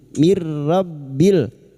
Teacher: masuk tanpa mendengung masuk pada huruf berikutnya tanpa mendengung